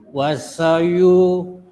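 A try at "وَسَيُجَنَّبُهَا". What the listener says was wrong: Ini yang makanya saya bilang apa? Tidak ada panjang. Wasayujan. Cepat.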